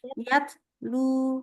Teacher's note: pas baca Yat nah lidahnya jangan nempel tapi habis bilang Yat lepasin lidahnya lepas lidah dari ujungnya